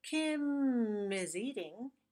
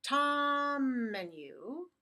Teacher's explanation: link the consonant most times the MM sound to the vowel in the next word